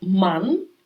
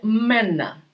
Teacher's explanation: голосна А вона змінюється на а умляуд і вона вже читається як е наприклад ман чоловік він стає мена чоловіки мена і і теж